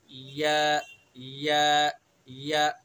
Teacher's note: जबान का बीच और उसके मुकाबिल ऊपर का तालु जो जीम शीन का मखरज है वो या मुतहर्रिक वलीन का मखरज है, अदा करेंगे या या या, ठीक है।